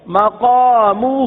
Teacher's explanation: مقامہ ہا کو ایک الف تک کھینچ کے پڑھیں گے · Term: کھڑا زبر کھڑا زیر الٹا پیش